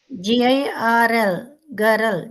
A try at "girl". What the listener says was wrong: గర్ల్. గర్ల్ అనాల, గర్రల్ అనకూడదు అట్లా. గర్ల్.